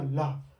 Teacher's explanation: पार्श्विक व्यंजन इसलिए कहते हैं, जैसे मैं ल बोला ला, तो जीभ के अगल बगल से जो हवा है वो निकल रही है